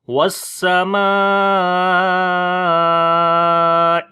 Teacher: متصل کا مطلب ہوتا ہے ملا ہوا، تو اس وجہ سے یہاں پر ہم مد جو ہے وہ لمبا کرتے ہیں 4 سے 5 سیکنڈ کے برابر۔ تو اس کو لمبا کر کے پڑھیں گے والسماء، آخر میں حمزہ ہے تو حمزہ کی آواز آئے گی ای۔ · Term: مد متصل